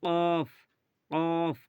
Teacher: জিভের গোড়া হতে, জিভের গোড়া এবং তার বরাবর তালুর সাথে লাগিয়ে উচ্চারিত হয় ২ নোক্তাওয়ালা কফ